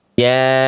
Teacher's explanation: Gunnah tuh betul. Dengungkan selama ditahan 2 harokat. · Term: nun tasdid